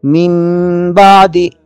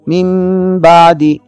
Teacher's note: مثال ملاحظہ فرمائیے، من بعد، نون ساکن ہے، نون پر جزم ہے، اس کے بعد با آ رہا ہے، لہٰذا یہاں اقلاب کی کیفیت ہوگی کہ نون ساکن کی آواز کو غنے کے حالت میں میم سے بدل کر ادا کریں گے